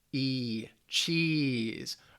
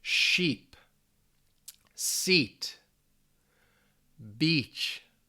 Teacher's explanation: your tongue is forward and it's a little higher too and that's how you get that long e